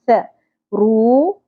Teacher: ث باریکی سے ادا ہوگا، سیٹی نہیں آنی چاہیے، نرمی سے ادا کریں گے